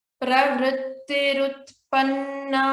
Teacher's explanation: So pravrittihi and utpanna turn into pravrittirutpanna.